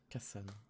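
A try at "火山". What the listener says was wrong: Le volcan ne se prononcera pas kasan. Du coup, on a cette règle de l'accent. le premier kana du second kanji, le sa, va prendre un accent. dakuten, ce qui nous donne kazan, ce qui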